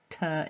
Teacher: the tongue on the alveolar Ridge at the back of the teeth is the vor plosive because the tongue is touching the soft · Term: alveolar plosive